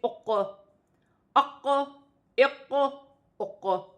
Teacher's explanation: آواز اق، اق، اق ہل رہی ہے ہمارے حلق میں، اسے قلقلہ کہا جاتا ہے۔